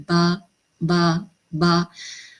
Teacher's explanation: دونوں ہونٹوں کے تر حصے کے ملنے سے با ادا ہوتا ہے۔ آپ کے ہونٹوں کا جو تر حصہ ہے، جو گیلا والا ہونٹوں کا حصہ ہے، اس کو آپ ملائیں، با با با۔